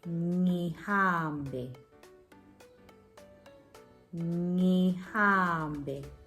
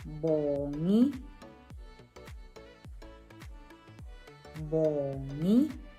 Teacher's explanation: Sound is at the back of your throat, your palate and your tongue are touching, and it's a backward versus a forward movement.